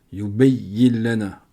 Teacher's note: On ne prononce pas le nun, on rentre dans le lem. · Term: idram biri el runna